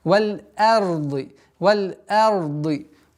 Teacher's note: Да, ра твердые, но твердость ра не должна влиять на мягкое произношение хамзы.